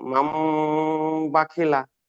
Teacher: নুন সাকিনকে মিমের দ্বারা পরিবর্তন করে একালি পরিমাণ গুণনা করে পড়তে হবে।